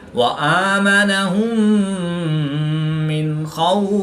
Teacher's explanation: نون ساکن کے بعد خا حروف حلقی میں سے ہے تو یہاں پر نون ساکن میں اظہار ہوگا یعنی غنہ نہیں کریں گے بلکہ نون ساکن کو ظاہر کر کے پڑھیں گے. واو ساکن سے پہلے خا پر زبر ہے تو واو لین اس کو لمبا نہیں کریں گے.